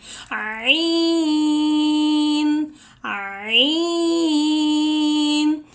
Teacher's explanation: हा की आवाज़ भी गले से निकालनी है, थ्रोट से निकालनी है, और आइन की आवाज़ भी गले से निकालनी है